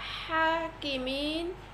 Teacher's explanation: এবং এখানে ইয়াসাকিন ডাইনেজের, এটি হচ্ছে মদের হরফ এবং মদের হরফের পরবর্তী হরফে হচ্ছে ওয়াকফের স্থান। এক্ষেত্রে তিন আলিপ টেনে পড়তে হবে এবং একে বলে মদ্দে আরজি। এবং ওয়াকফের স্থানে নুনে জবর এসেছে, এখানে নুনে সাকিন হয়ে যাবে, কারণ ওয়াকফের স্থানে যদি এক জবর, এক জের এক পেশ, দুই জের দুই পেশ আসে সেক্ষেত্রে মনে মনে সাকিন ধরে পড়তে হয়, একে বলে আরবি সাকিন।